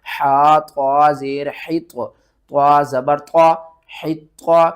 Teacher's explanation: طا حروف مستعلیہ میں سے ہے، اس کو ہم نے موٹا کر کے پڑھنا ہے